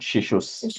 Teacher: that Visarga becomes a is sound